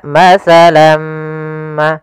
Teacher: mim ini awalnya matsalan kita baca dengan Lan karena bertemu mim tanwinnya masuk kepada huruf mim tinggallah bunyi suara huruf mim